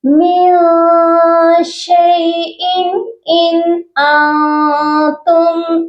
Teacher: شیء کی تنوین پر اظہار ہوگا کیونکہ آگے حروف حلقی ہے، اور ان کی تنوین پر بھی اظہار ہوگا.